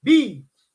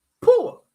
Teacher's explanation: B and P are labials. See, the difference between B and P is only voicing